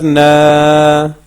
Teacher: اور اس میں ایک چیز کا خیال رکھنا ہے کہ یہ آواز جو ہے نا ایسے پڑھنا ہے، آپ نے نا ناک میں آواز نہیں نکالنی ہے